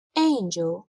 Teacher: in the word angel, there are two syllables. angel. The first syllable, ain, is the stressed syllable. We say angel.